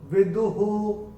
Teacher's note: दूसरे चरण में जो विसर्ग आ रहा है चरण की समाप्ति पे आ रहा है, तो उसका उच्चारण केवल और केवल ह ही होगा।